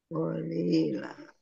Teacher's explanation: fathah tanwin alif karena wakof dibaca fathah dan panjang 2 harokat. Panjangnya 2 harokat saja, ya jangan panjang-panjang. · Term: mat iwad